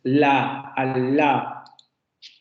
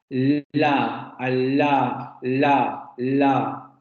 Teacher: La punta de la lengua sube hacia los alvéolos, aquí es donde se tocan, se produce ese bloqueo, pero no se produce un bloqueo oclusivo, porque el aire tiene que salir por los lados de la lengua